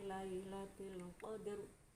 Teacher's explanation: Qadr dalnya itu qalqalah sughroh, sedang roknya itu tafkhim.